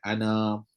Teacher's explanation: bila berhenti maka na tersebut dibaca dengan dua harkat